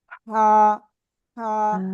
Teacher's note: ওকে, তো আলহামদুলিল্লাহ আমরা মোটামুটি ক্লিয়ার হলাম যে হা এরকম বলা যাবে না, বলতে হবে কি গলাটা চেপে মুখ দিয়ে হালকা বাতাস বের হবে। হা হা এক লিফট টেনে পড়তে হবে।